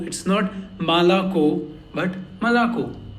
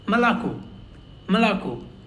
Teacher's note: It's in between a and O.